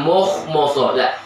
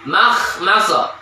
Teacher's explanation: Yang tebal kha dan sad, mimnya jangan tebalkan